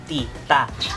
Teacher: The Filipino T is a stopped/controlled sound